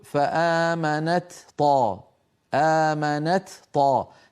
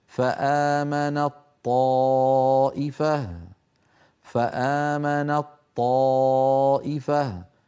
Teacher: يحولون التاء إلى طاء ويدغمون الطاء في الطاء فيقولون فآمنت طائفة، فآمنت طائفة، هكذا بطاء مشددة.